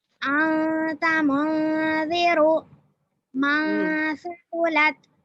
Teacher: نون کی آواز کو ناک میں چھپا کر پڑھیں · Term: اخفا